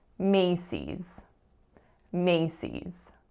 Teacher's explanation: the strongest syllable is the first